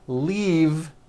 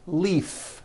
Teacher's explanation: this last word leave is very different from the word leaf like from a tree which has an unvoiced f